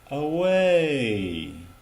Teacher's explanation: let the tone of the voice go down